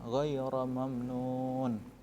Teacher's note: Ghaira mamnun, nunnya kalian panjang, mat arid sukun. Kalian dibaca panjang, jangan seperti ini membacanya.